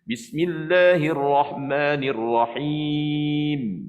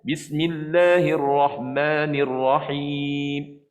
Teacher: Dan sifat gunnah mesti ada pada mim.